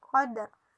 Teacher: Apabila mati, maka hukum bacaannya qalqalah jadi pantulan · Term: qalqalah sugro